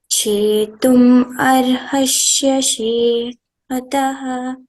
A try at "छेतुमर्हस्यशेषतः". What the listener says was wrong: No, it is not chetum arhasya. Chetumarhasya sheshataha. That is chetum arhasi asheshataha. If you want to split while explaining the meaning. So while chanting, don't split. Chetumarhasya sheshataha.